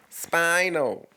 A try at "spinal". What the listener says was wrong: Your S was a little too pronounced there, bud.